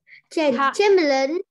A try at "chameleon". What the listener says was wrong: Cái này không phải là âm chờ mà con phải đọc cô là âm khờ. Chameleons. Chameleons.